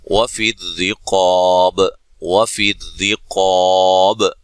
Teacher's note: را کو باریک ادا کرنا ہے، قاف کو موٹا